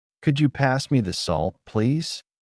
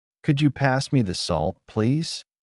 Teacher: Notice how the voice rises on could you and falls gently at the end. This rising and falling tone makes the sentence sound natural.